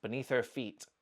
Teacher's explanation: you'll notice that we don't say her, beneath her feet. We're dropping the h sound. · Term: weak form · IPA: /bɪˈniθ ər fit/